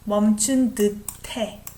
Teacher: S and H together sounds like T. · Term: T sound